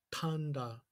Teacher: If you bring that t t t to the back of your throat, it becomes t t t, like tanda. And the same with the D as well.